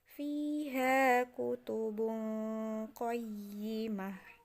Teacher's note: ketika kita baca bukan lagi jadi tu, tapi menjadi ha. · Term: huruf ha